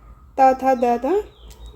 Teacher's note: द का जो उच्चारण स्थान है वो है दंत्य और दंत्य में आपका त थ द ध न ये ये सब जो है हमारे दंत्य के उच्चारण स्थान है।